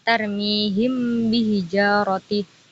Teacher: mim sukun dibaca tampak samar disertai gunnah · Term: ikhfa syafawi